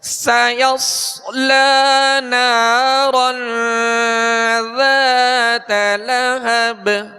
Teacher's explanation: سین کو سیٹی کی آواز میں سختی سے اور باریک پڑھیں گے. سایوس آگے صاد ہے، صاد کو پر پڑھیں گے، ہونٹ گول نہ ہو اور سیٹی کی آواز پیدا ہو.